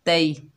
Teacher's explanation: ये या लीन है, इसको नरमी और जल्दी से अदा करेंगे। ता को या साकिना से मिलाएंगे, तई।